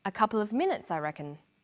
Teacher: the man answers with a statement a couple of minutes i reckon this takes a falling tone in english statements usually end in a falling tone the falling